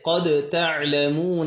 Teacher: جیسے قد تعلمون، اصل میں قد تعلمون تھا، تو اس کو کیسے پڑھیں گے؟ دال ساکن ہے، ساکن دال کو تا میں مدغم کر دیں گے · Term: ادغام متجانسین